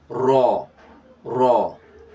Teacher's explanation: when it's in the state of tafkhim, it's pronounced as ro. Ro. With the takrir more pronounced.